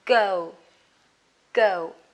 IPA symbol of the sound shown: ɡəʊ